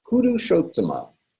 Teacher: The two T's together in Purushottama, we pronounce both T's as well. Hit the brakes on the first T and then keep going on the second T.